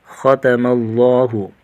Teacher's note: خا کو موٹا کریں گے، لفظ اللہ کلام کو بھی موٹا کر کے پڑھیں گے